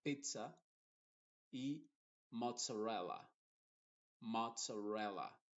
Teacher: Ahí se dice con una T y una S, mozzarella y pizza.